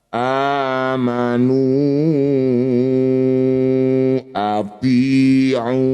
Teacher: Ini disebut bacaan namanya mad jajaiz munfasil. Nu yang bertanda layar panjangkan dulu lima harakat.